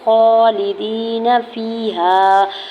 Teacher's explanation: خا کے اوپر کھڑی زبر دوڑ کر کھینچ کے ادا کریں گے